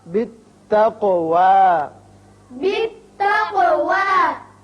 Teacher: قاف پر بھی ہوگا اور اس کی صفت قلقلہ ادا کریں گے. یہاں وقف ہوگا.